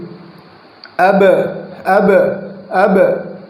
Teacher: جب آپ قلقلہ کریں گے تو آواز لوٹ کر آئے گی، یعنی مخرج سے آواز لوٹے گی۔ اب اب اب دیکھ رہے آواز جو ہے نا، آپ کو دکھ رہا ہوگی ساؤنڈ، اب اب اب جو آپ ادا کریں گے اندر والے حصے سے ادا کریں گے، باہر والے حصے سے ادا نہیں کریں گے، کیونکہ مخرج خلط ملط ہو جائے گا۔